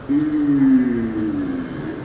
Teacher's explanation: For those who've studied German, this is like the U with two dots over it. You can do it very simply by saying E like that, but rounding your lips. So not E, but U.